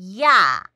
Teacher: 그런데 이중 모음의 야 할 때는 처음에는 활모음, 다시 말해서 활음, 그러니까 반모음이라고 하는 이의 입술 모양과 혀의 위치가 나오다가 그 다음 아로 바뀌는 거죠. 야 이렇게 입술 모양과 혀 위치가 바뀌는 것을 이중모음이라고 합니다.